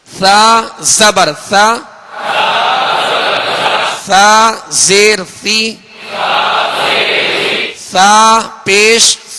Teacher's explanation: सा को नरमी के साथ बारीक पढ़ेंगे